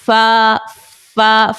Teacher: फा का मखर है ऊपर के दांतों के किनारे जब निचले होठ के तर हिस्से से लगे